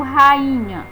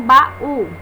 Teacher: cada vogal vai ficar na sua sílaba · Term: hiato